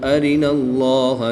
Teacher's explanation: اللہ عز و جل کے لام سے پہلے حرف پر زبر ہے تو اس لیے اس لام کو پر یعنی موٹا پڑھیں گے